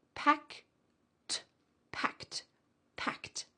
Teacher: That ed ending sounds like a t.